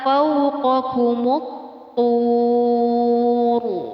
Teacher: Ra di sini dibaca dengan tafkhim atau tebal.